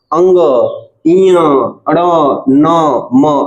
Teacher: क्योंकि इनको यदि हम बोलते हैं ना तो हमारी नाक से आवाज आती है। नाक से हमारी धुन निकलती है। नाक से वायु निकलती है। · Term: नासिक्य व्यंजन